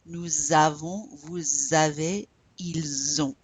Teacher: Elles ont. So we're pronouncing this S in front of the vowel, but notice that it makes a Z sound